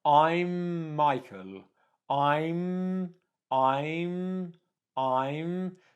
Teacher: make sure when you come up you're making that M sound for enough time